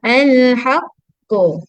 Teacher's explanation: Dia antara bunyi baris atas dan juga baris hadapan. Antara. So dia bukan ko, dia bukan ku, tapi dia ko.